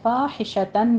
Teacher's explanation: فعلو میں واو مدہ ہے، 2 کاؤنٹ کرنا ہے۔ فاحشتن میں ہا باریک پڑھنی ہے اپنے سانس کی آواز کے ساتھ، اور تن میں اظہار ہلکی کریں گے، تنوین کا قاعدہ۔